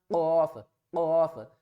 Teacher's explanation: قوف کو بھی ہم نے موٹا پڑھنا ہے · زبان کی جو بیک سائیڈ ہے اس کو ہم اوپر کی طرف لے کر جائیں گے، اوپر حلق سے ملائیں گے